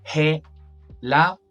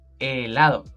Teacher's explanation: Even though we write the H, in Spanish we don't pronounce it.